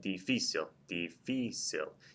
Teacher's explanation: it ends in something other than a vow and S and the stress is on the second syllable